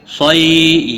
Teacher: یا لین ہے، تھوڑا نرمی کے ساتھ کھینچ کر ادا کریں گے، صاد حروف مستعلیہ میں سے ہے، پور پڑھا جائے گا۔